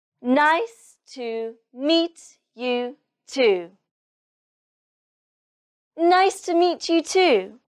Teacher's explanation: the stress is on nice, meet, and too